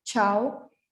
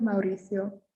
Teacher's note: when we have an a o or a u um even though usually the vowels are pronounced separately it's just common to say them together and make an ow sound